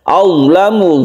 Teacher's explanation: kita tebalkan ya, karena dia itu termasuk huruf isti'la, huruf yang menyebabkan lidah itu terangkat ke langit-langit